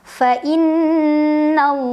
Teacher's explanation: Lam jalalah dibaca secara tafkhim. Karena huruf sebelumnya yaitu nun berbaris di atas. Maka bacanya tebal.